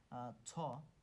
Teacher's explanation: কম্পনটা হচ্ছে অঘোষ কম্পন এবং এটা হচ্ছে মহাপ্রাণ এবং এটার উচ্চারণের হচ্ছে তালব্য সুতরাং এইগুলো যদি আমরা এভাবে মনে · ছ হচ্ছে তাহলে নিশ্চয়ই অঘোষ, কারণ চ ছ প্রথম 2টা হচ্ছে অঘোষ হবে আর শেষ 3টা হচ্ছে ঘোষ হবে। তাহলে ছর কম্পনটা হচ্ছে অঘোষ কম্পন, এবং এটা হচ্ছে মহাপ্রাণ, এবং এটার উচ্চারণের স্থান হচ্ছে তালব্য